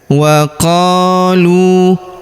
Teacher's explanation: Huruf qo kita panjangkan dua harakat karena terdapat alif di depannya.